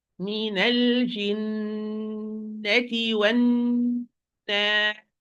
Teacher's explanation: And the time of the ghunna here is the most complete because it's stressed. The wavy way, the musical way, shaking the sun, wavy sound, vibrating the sound.